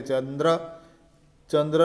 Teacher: ચંદ્ર લખાય ત્યારે ખરેખર તો તેના વર્ગના અનુનાસિક વ્યંજનો સાથે ચંદ્ર બોલાય છે